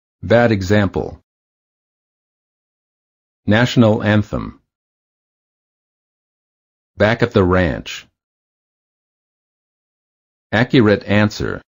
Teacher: The lips are open, not rounded, and the tongue is in the lowest position of all the front vowels. The tongue is flat on the floor of the mouth.